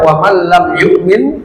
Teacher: nun sukun bertemu lam, idgham bila gunnah, dimasukkan tapi tidak didengungkan ya, masuk nun sukunnya ke lamnya tapi tidak didengungkan, tidak lama.